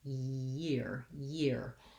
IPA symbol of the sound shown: j